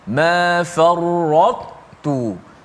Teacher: Maka matikan ta dalam keadaan tebal. Dijelaskan sifat itba' ta itu. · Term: idgham naqis